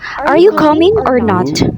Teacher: offering a choice of two, or the high to low intonation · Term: mixed intonation